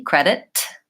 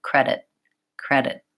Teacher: moving up into that T but not letting the air out at all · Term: stop T